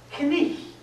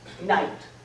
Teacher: Chaucer pronounced the K, he pronounced that GH as a kind of explosion of breath. Knicht. And the vowel in the middle is icht.